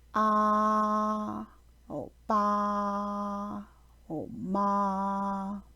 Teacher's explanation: The first tone is characterized by a high, steady monotone without any change in pitch.